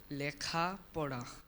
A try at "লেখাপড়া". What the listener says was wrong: আমরা উত্তরটি নিতে পারছি না, এটা পরিষ্কার এ উচ্চারণ করতে হবে, লেখাপড়া।